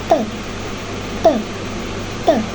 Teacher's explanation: Ketika kita melepaskan hambatan tersebut maka aliran udara akan melalui ujung lidah dan meletup. Cara mengeluarkan aliran udara yaitu non aspirasi atau tidak disertai dengan udara. · Cara mengeluarkan aliran udara yaitu non-aspirasi atau tidak disertai dengan udara. T. Keadaan glotis yaitu terbuka sehingga bunyi dialirkan tanpa menggetarkan pita suara.